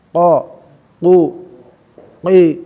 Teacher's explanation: Nah, yang penting terangkat lidahnya bukan kul tapi qul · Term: qaf